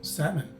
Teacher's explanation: you will see that the stress is in the first syllable the letter l is a silent letter and the letter o is a sua sound meaning it sounds much shorter than a short o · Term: schwa sound